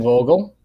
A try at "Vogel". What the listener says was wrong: Vogel. With an F.